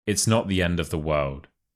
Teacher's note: you need to slightly stress the final word world and also you want to make sure that your tone is